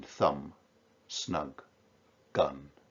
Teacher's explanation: the whole of that is enhanced by the assonance of the short vowel ah in thumb snug gun